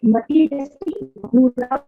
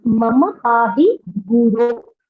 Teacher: slight difference is the first time it is an au, and the second time it's O